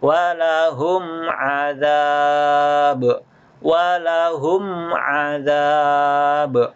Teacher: huruf mim sukunnya dibaca jelas tanpa didengungkan. Namanya izhar, dibaca jelas. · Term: izhar syafawi